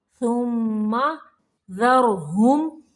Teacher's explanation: را کو موٹا پڑھیں گے ساکن کرتے ہوئے